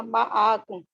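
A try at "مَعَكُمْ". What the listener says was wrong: माकुम, मा नहीं, माकुम।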